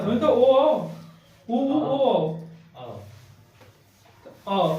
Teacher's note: जिन जिन स्वरों का उच्चारण करने पे ओठ की आकृति गोल हो जाए वो वृत्त मुखी